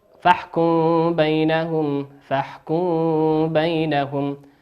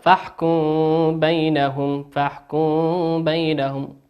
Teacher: الحكم الأول وهو الإخفاء الشفوي، وسمي وحرفه حرف واحد وهو حرف الباء. إذا أتى حرف الباء بعد الميم الساكنة يسمى إخفاء شفويا لخروج الميم الساكنة والحرف من الشفتين